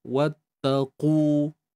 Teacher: Pastikan kita angkat pangkal lidah untuk kita tebalkan qaf ni. Wattaqu. Muncung bibir pun ya juga sebab dia baris depan.